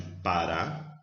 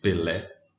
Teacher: A sílaba forte é a última, terminou em A. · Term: oxítona